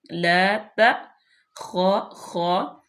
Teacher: خا کا مخرج ادا کرتے ہوئے کھرکھری سی پیدا کرتے ہیں